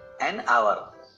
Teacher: As H is silent here, hour starts with a vowel sound. So, N is used before the word hour.